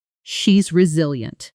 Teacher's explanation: with the emphasis firmly on the middle syllable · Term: stress pattern